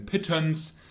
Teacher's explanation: the central mid sound would, for example, be the E as in pittance. This sound is called the schwa.